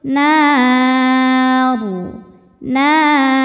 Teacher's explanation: sebelumnya ada Alif sebelumnya lagi ada fathah jadi penentunya yang fathah rnya ditebalkan lidah naikkan bunyinya ngumpul di mulut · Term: tafkhim